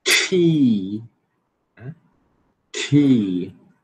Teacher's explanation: É vogal longa, né? Que a gente já estudou. E tem aspiração.